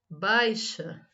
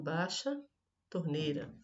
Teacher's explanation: Na leitura eu posso falar baixa e acabar omitindo o i. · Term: omissão da semivogal